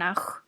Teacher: el sonido es fricción entre el velo del paladar y la zona posterior de la lengua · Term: jota